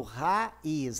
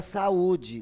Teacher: E a última espécie de encontros vocálicos, nós vamos ter os hiato. É o encontro imediato de 2 vogais, cada uma delas pertencendo a uma sílaba distinta.